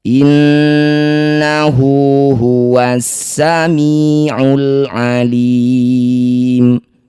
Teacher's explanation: Inna, nun bertasydid, disebut bacaan gunnah musyaddadah, dengungkan nun 2 harokat. Innahu, setiap ada hu atau hi yang dibaca panjang disebut bacaan marsilah qasirah. Panjangkan hu 2 harokat.